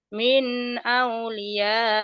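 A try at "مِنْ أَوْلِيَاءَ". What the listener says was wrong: Minnya idhar, jangan ditahan. Min aulia. Min aulia. Min jangan au gelap au. Min aulia, coba lagi.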